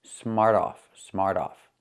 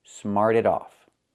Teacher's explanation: When you say it together, the T changes to a fast D.